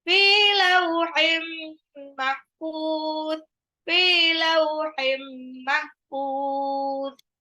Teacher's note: Fa-nya ini mad tabi'i 2 harokat.